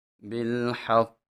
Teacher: قاف کو موٹا بھی پڑھیں گے اور اس میں قلقلہ بھی کریں گے۔